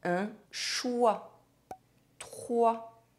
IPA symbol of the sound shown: wa